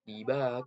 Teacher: Nah, pada huruf ba itu mat tabi'i karena ada ba alif mat, jadi dibaca panjang 2 harokat · Ko itu hukum tajwidnya itu mat iwat karena ada harokat tanwin atau fatatain yang diwakofkan atau diberhentikan dan cara bacanya dari kon menjadi ko